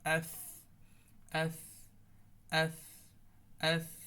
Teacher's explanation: শীষের কোনো ভাঙা এখানে আসবে না, শুধু হামস। হামস মানে শুধু বাতাস